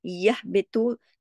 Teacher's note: तो को मोटा पढ़ना है, इसको ता की तरह नहीं , सिंपल सा सादा सा ऐसा नहीं, यह बेतु मोटा पढ़ा